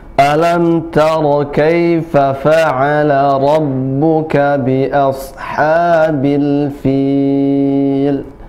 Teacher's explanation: ra-nya tebal, tafkhim, ya, maka lidahnya, di ujung lidahnya dikenakan ke makhraj, yaitu di ujung di langit mulut bagian ujung, kemudian ditekan ra dan membentuk suara yang memenuhi mulut